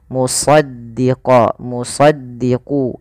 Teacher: Istia itu pangkal lidahnya terangkat kemudian idbaak idbak itu lidah kita lebih melekat dengan langit-langit atas · lidah kita lebih melekat dengan langit-langit atas maka dia agak ditebalkan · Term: Shad